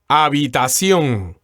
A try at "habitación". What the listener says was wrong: the first thing that comes to mind here is that the H is silent here in, why don't you say it again for us? And the accent sounds like the accent is on the last syllable.